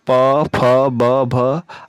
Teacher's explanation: जिन वर्णों का उच्चारण ओठों के सहायता से होता है ऐसे वर्णों को हम ओष्ठाय वर्ण कहते हैं